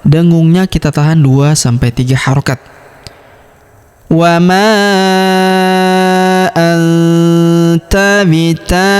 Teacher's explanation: Wama anta bi huruf nun sukun bertemu huruf ta. Maka nun sukunnya melebur ke huruf ta. Kita baca dengung dan samar.